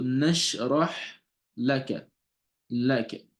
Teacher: So the lam here is pronounced with a light sound, and the kaf as well. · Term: light letters